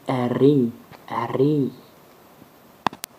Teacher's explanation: La lettre R se roule